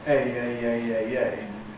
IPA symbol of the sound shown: eɪ